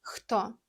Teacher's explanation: H is a soft, breezy sound from the back of your throat. Kind of like a H in the huge, but with a bit more air.